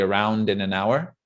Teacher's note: Well, it's not din an hour, it's around in an hour, but we could often just link those together and it goes by very quickly.